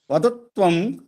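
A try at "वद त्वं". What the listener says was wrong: మీరు శబ్దాలు కలపకండి. వదత్వం కాదు, వద వేరు త్వం వేరు. కాదు, వద వేరు త్వం వేరు.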